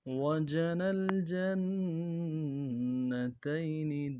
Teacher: نون کو اگلے لام کے ساتھ ملانا ہے